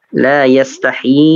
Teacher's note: La yastahi, i-nya juga panjang 4 harokat